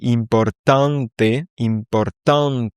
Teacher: Si je te dis importante, importante, ici, tu as vraiment le en qui est accentué